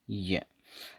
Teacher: Active articulator तो हो जाएगा इसमें फ्रंट ऑफ टंग, और पैसिव आर्टिकुलेटर होगा इसमें हार्ड पैलेट · जब आप ये का प्रोनाउंसिएशन करोगे तो आपका जो टंग का फ्रंट है ये हार्ड पैलेट पे जाके टकराता है। तो इसमें जो एक्टिव आर्टिकुलेटर है, एक्टिव आर्टिकुलेटर तो हो जाएगा फ्रंट ऑफ टंग।